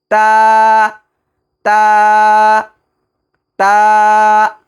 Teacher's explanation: তায়ের মাখরাজ হলো জিহ্বার আগা সামনের উপরে 2 দাঁতের গোড়ার সঙ্গে লাগায়া